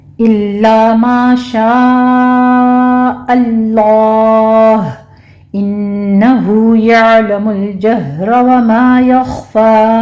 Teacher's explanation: आगे लाम को भी स्टॉप करना है। जहरा में हा सीने की जानिब अक्से हलक से अदा होगा, इसको भी स्टॉप करना है, रॉ पुर पढ़ी जाएगी। · यालमु में आइन वस्ते हलक से अदा करेंगे, स्टॉप करना है, इस पर झटका नहीं देना। आगे लाम को भी स्टॉप करना है।